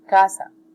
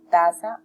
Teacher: Un ejemplo del habla con dislalia es cuando se dice taza por casa, en el cual se ha frontalizado el fonema velar K, se ha reemplazado, sustituido por el fonema T, el cual se articula con la lengua y los dientes